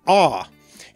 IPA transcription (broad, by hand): a: